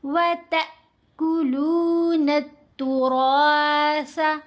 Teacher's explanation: را کو موٹا پڑھیں گے، سا کو نرم پڑھیں گے.